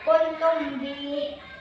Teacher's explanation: dibaca samar-samar, hurufnya mim sukun bertemu dengan ba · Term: Ikhfa Syafawi